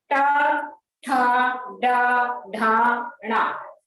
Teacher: यानी जीभ ऊपर मूर्धा से स्पर्श करती है। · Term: मूर्धन्य वर्ण